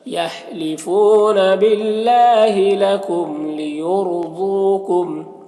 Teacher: یہاں پر را ساکنہ سے پہلے یا کے اوپر پیش ہے تو را کو پر پڑھیں گے، ضاد کو پر پڑھیں گے، یہ حروف مستعلیہ میں سے ہے، اور یہاں پر واو مدہ ہے، ایک الف کے برابر کھینچیں گے، اس طرح سے۔